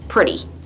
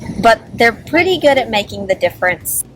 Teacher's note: notice how I pronounce pretty like it's spelled with a D instead of a T